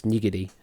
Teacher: As far as I'm aware, I think there's no emphasis on either syllable, so it's nigiri.